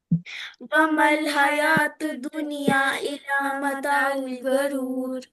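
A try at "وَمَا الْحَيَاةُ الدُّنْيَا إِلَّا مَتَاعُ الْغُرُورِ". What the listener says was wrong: ومل حیاتد. تا اور دا ملے گا آپس میں. ومل میم اور لام ملے گا آپس میں. ومل حیات الدنیا الا متاع الغرور.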